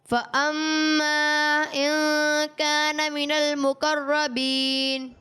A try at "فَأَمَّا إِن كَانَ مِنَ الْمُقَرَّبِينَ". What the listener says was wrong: اچھی کوشش کی آپ نے، لیکن آپ خیال رکھیں کہ مد کی مقدار کو پورا کریں.